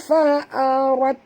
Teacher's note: Jadi bunyi dia fil bahri fa'arat, huruf ra kena baca tebal dengan ra berbaris di atas, namanya ra tafkhim, ra tebal ya.